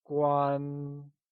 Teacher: 关 is pronounced using a high-level tone.